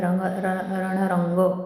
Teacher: र वर पुन्हा आघात येईल, पुढे जोडाक्षर आहे